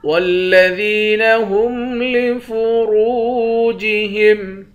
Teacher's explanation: ذال کو یا کے ساتھ ملا کر یا کو ایک الف کی مقدار کھینچیں گے، یا حروف مدہ ہے۔ را کو واو کے ساتھ ملا کر واو کو بھی ایک الف کی مقدار کھینچیں گے، واو بھی حروف مدہ ہے، اس را کو موٹا پڑھیں گے۔